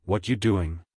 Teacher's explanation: You don't hear the word are.